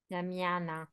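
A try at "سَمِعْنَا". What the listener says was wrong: नहीं नहीं, समय, जो आपका लाम कलमा साकिन होगा ना, समय ना, लाम कलमा साकिन।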